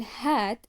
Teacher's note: the H sound in hat is produced by forcing air through open vocal cords · the H sound is voiceless meaning the vocal chords do not vibrate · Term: glottal sounds